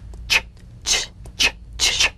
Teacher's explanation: Place the tongue firmly on the upper gum ridge for the T, then crash through gently but sharply with the SH.